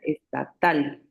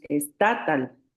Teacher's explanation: Ujú, aguda. porque la última sílaba es la que suena más fuerte, es la sílaba tónica